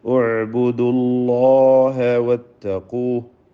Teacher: അല്ലാഹ് എന്ന ഇസ്മുൽ ജലാലയിൽ ലാമിന് തഫ്ഖീമാണ്. തടിപ്പിച്ച് പറയാം.